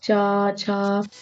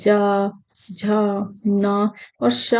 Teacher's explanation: आपकी जो जीभ है उसके आगे का जो भाग है ना, आगे का भाग वो तालु के कठोर भाग से स्पर्श करेगा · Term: तालव्य